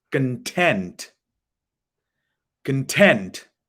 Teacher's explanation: you raise your voice on the second part